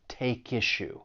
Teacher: But when you are pronouncing this phrase, keep in mind that we can link the final consonant sound in take with the beginning vowel sound in issue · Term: linking